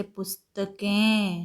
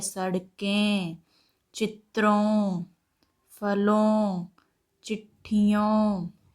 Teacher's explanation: नाक और मुंह दोनों से आवाज निकल रही है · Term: अनुनासिक